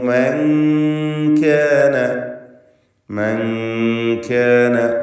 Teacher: അപ്പോൾ ഖാലു കൈഫ നുകല്ലിമു മൻ കാന, മൻ കാന ഇതിൽ സാക്കിനത്തായ നൂൻ ശേഷം കാഫ് ഇഖ്ഫ ഹഖീഖി എന്ന നിയമമാണ്. നൂനിനെ അവ്യക്തമാക്കി മണിക്കുക.